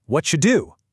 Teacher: When a word ends with the letter T, like the word what, and the very next word begins with a D or Y, like do or you, the physical collision of those letters in the mouth naturally creates a cha sound.